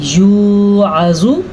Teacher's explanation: واو مدہ ضرور ادا کرنا ہے، زوا کو لمبا نہیں کرنا آپ نے